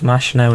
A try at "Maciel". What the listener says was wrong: Yeah, Maciel is in 4th. You pronounce Maciel, not Machinel.